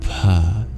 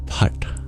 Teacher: it has an aspirated P sound, pa, almost like an F, and a retroflex T that requires us tapping the bottom of our tongue against the roof of our mouth